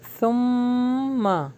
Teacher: ثم سا کو ہم سافٹ پڑھیں گے، میم کے اوپر مشدد ہے تو یہاں پہ غنہ دیں گے